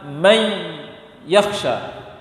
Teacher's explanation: Yang punya sifat dengung adalah nun. Kalau nun sempurna digabung sempurna ke ya, diharuskan nun sukun hilang. Sifatnya dan bunyinya hilang 100%. Maka bacanya adalah may yakhsha.